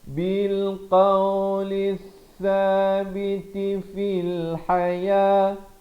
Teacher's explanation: Di sini alif lam syamsiah ya, lamnya tidak dibunyikan.